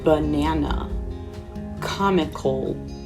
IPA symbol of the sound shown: ə